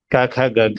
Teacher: It is not dha, it is gha. Mahaprana gha.